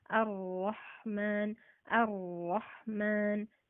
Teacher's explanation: Kaidahnya ketika tasdid justru disamarkan ar-Rahman, ar-Rahman, tapi tetap ada sifat tebalnya, tafkhimnya. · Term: takrir